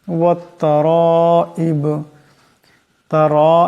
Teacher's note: এখানে রার উপর মদ আছে, এই রাকে লম্বা করিয়া পড়তে হবে।